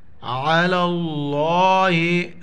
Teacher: لفظ اللہ سے پہلے زبر ہے، لفظ اللہ کو جو ہے نا موٹا پڑھیں گے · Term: لفظ اللہ موٹا